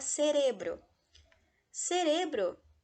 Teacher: por ser a penúltima sílaba tônica ele segue a regra das graves e as graves só são